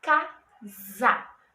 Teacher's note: Ele é escrito com um S, está entre duas vogais, mas ele tem um sonzinho de Z